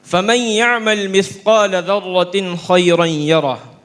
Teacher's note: تنوین سے خا کی طرف انتقال بلا کسی تاخیر کے سرعت کے ساتھ ہوتا ہے